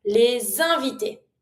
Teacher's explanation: if I want to say the guest, plural, I'm going to make the link with the S